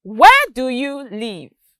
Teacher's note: when i said where there was a rise in my tone and then when i got to leave there was a drop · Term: intonation